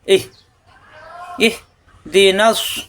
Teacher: ইহ মুখ খোলা থাকবে, ইহ কণ্ঠনালীতে চাপ সৃষ্টি হবে না, দুটোটা হরফই মুখের খোলা জায়গা থেকে।